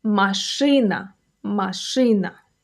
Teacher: This one is fairly close to the English word machine, which makes it easy to remember. Stress is on the second syllable.